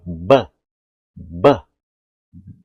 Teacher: o lado de cima encontra com o de baixo ele rompe bruscamente com o ar sair